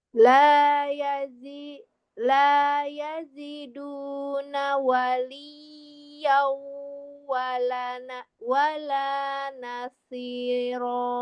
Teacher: ya dua harakat, shadnya ditebalkan